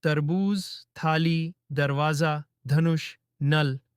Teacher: जीभ ऊपरी दांतों से टकराती है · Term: दंत्य